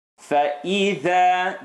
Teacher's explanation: The letter dha in this scenario, the tongue had to come to the cusp of the teeth. Has to come out a little bit.